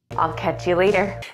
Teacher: it's voiced since there are vowels all around the T in front and behind and it's an unstressed syllable it will sound more like a d